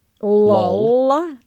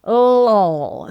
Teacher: So if you say the word L-U-L-L, lol, and feel where your tongue is, the L at the beginning is what we call a light L, and the L at the end is called a dark L